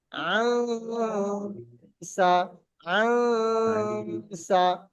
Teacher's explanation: এক আলিফ পরিমাণ নাকে গুণনা করতে হবে